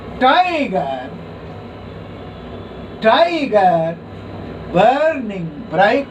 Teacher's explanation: the first syllable is stressed and the second is unstressed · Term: trochaic